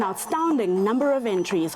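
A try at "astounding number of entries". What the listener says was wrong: I'm the only one who notices now saying outstanding in the face of the word astounding it's not outstanding it's astounding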